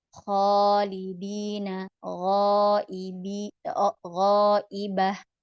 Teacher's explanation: kalau huruf kho dengan gho adalah huruf tebal. Jadi alifnya juga harus tebal.